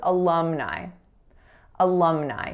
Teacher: in alumni there's three syllables that first letter A is a schwa the second syllable is Lum so that lacks a sound and